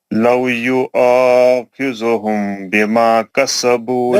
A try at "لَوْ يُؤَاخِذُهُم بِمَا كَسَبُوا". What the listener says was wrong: نہیں, خذو میم کے بعد با ہے, اخفاء شفیع ہوتا, خذوہم بما,